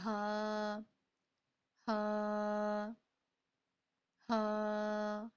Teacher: اقصائے حلق سینے والی سائیڈ کی طرف، جو جہاں پہ ہمارا حلق ہے، ہماری گردن کا اینڈ ہے، ٹھیک ہے، سینے کی طرف. کہ جب ہا کی ادائیگی کریں گے نا تو ہمارا سینے کی طرف سے وائبریٹ ہوگا. ٹھیک ہے، سینے کی طرف وائبریٹ ہوگا جیسے ہا ہا ہا، ہمارا سینہ وائبریٹ کرے گا نیچے سے.